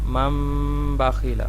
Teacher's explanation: اس کو ہم نے نون ساکن کو میم سے بدلنا بھی ہے اور گننا بھی کرنا ہے. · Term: اقلاب